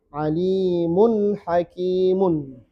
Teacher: Ada tanwin ketemu ha. Pastikan dia dibaca jelas nunnya, tidak dengung. Tidak dengung di sini tidak dengung panjang ya. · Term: idhar halki